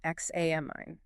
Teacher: The rhythmic stress falls heavily on the second syllable, examine, and it finishes with a very short, clipped E sound.